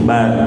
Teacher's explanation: ba-nya dibaca tipis jangan bor